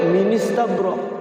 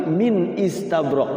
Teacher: Hamza qot itu harus dihidupkan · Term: Hamzah qot